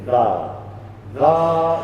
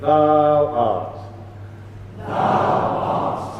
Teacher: So the w bit of thou is hardly anything at all. It's basically thou.